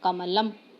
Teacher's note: देखिए माँ के बाद में कोई स्वर नहीं सुनाई दे रहा है